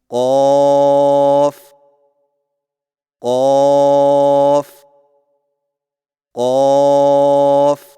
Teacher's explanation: जुबान की जड़ को कवे के मुत्त सिल तालू पर लगाकर मोटी आवाज में पढ़े · قاف کی ادائیگی میں زبان کی جڑ کو کوے کے متصل تالو پر لگا کر موٹی آواز میں پڑھیں